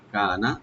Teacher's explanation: কাপটাকে open করে একালিফ টানবেন, নুনে কোনো টানবেন না,